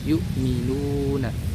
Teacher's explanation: Karena huruf mad ini keluarnya tidak dari hidung ya, tapi dari rongga mulut dan rongga tenggorokan